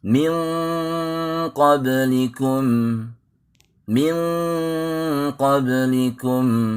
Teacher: Pada saat kita menyebutkan min, pangkal lidah diangkat, menebal. Suara di pangkal lidah. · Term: ikhfa